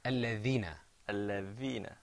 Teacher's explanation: you put your tongue on your teeth. Okay? You kind of stuck your tongue out a little bit.